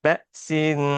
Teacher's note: حروف اخفا میں سے آ رہا ہے شین، تو یہاں پہ غنہ کریں گے